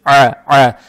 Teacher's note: Здесь буква «айн» гортанная с фатхой. Фатху произносим через гортань